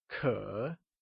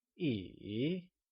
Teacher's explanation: it is said with a falling rising tone